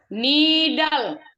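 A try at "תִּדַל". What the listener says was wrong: Tidal ya. Tap ini tap.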